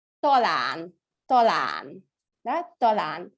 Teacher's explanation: То есть помним, держим в голове, что у нас звук О, это среднее между О и А